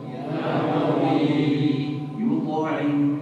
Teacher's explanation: Di dalam pengucapannya itu qaf dan ta itu tebal ya. Kemudian ya jadi dijaga sifat tafkhimnya.